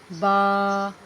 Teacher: ہونٹوں کے اندر والا حصے کے ملنے سے با ادا ہوتا ہے، با۔ اور اس کے ساتھ الف ہے تو اس کو ایک الف کے برابر لمبا کریں گے۔